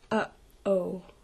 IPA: ʔ